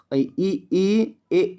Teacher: ए ए बोलने में आपका क्या होगा अग्र भाग ठीक है जीभ का अग्र भाग उठेगा